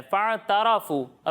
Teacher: را کو پر پڑھنا ہے، تا کو باریک پڑھنا ہے